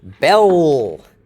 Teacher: ending with a dark L at the end of the syllable